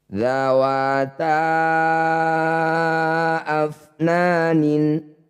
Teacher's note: Mad tabi'i bertemu hamzah di lain kata disebut bacaan mad jaiz munfasil. Ta panjangkan 5 harokat atau 5 ketukan.